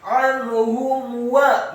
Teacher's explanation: Anhum. Kemudian ha-nya dibaca tafkhim dhammah satu harokat, mimnya dibaca sukun. Anhum wa, mim yang sukun bertemu dengan huruf waw. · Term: ilhar syafawi